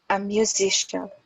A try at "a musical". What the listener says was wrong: because here you don't have IAN. So so when you have IACIAN, when you have this part, So these are shun. Okay, but here this is normal cal. So this is just cal, normal.